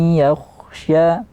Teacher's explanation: nun sukun berjumpa dengan ya dimasukkan ke huruf ya tapi di sini dengan ghunnah dialirkan bunyi di hidung